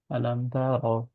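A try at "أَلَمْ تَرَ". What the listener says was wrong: তাতে একটু স্লাইট টান হয়ে গেছে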